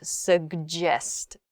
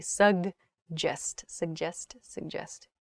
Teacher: there's a G sound, G, and then it's followed by a J sound, suggest, G, J.